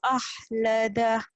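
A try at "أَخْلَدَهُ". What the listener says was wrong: akhlada kotor ya. Pilek dulu atau ngorok dulu tidur dulu ya. Akhlada kotor ya, jangan ahlada. Kalau itu ha. Kotor.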